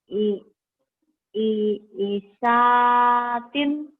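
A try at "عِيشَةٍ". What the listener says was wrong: Isyatin. Panjang.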